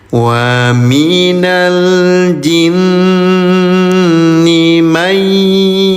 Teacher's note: Ini ada proses dulu dileburkan ya bunyi nun sukunnya ke huruf ya baru didengungkan. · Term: idgham bigunah